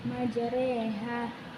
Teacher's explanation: Imalah memiringkan fathah ke kasroh atau memiringkan alif ke arah ya.